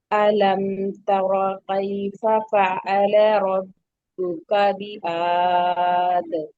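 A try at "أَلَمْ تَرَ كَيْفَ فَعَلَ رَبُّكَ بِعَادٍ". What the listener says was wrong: सिर्फ ये काफ का जो हो गया, कई हो गया, कई नहीं है, ठीक है। कई फिर दूसरा काफ आ जाएगा।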